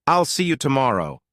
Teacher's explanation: For example, in the phrase I'll see you tomorrow. Notice how there's a tiny pause after I'll see you. This makes your speech flow naturally. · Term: pausing